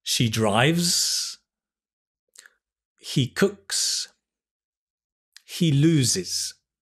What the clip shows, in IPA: Z, S, IZ